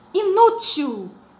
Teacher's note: a sílaba tônica é a penúltima sílaba mais forte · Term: paroxítonas